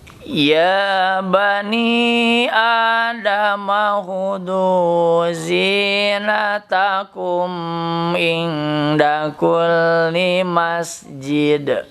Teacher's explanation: Ya mad tabi'i, ya dua harokat saja.